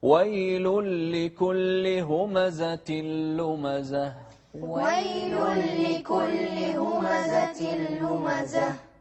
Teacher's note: وضحوا الهمس في الهاء آخر شيء